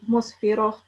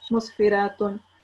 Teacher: So we will not pronounce the ta as in with sakin, but we will pronounce a ha marbuta with a sakin. So it will be musfirah instead of musfiratun.